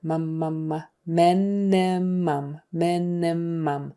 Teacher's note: The M's are lips together.